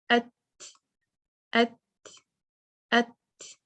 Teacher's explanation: पहले शिद्दा की सिफ़्त अप्लाई होगी और उसके बाद हम्स।